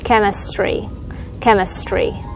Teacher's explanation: Mình nhấn âm một là ke, ch là mình âm ca đúng không? Chemistry, must say ra xong rồi tree nha.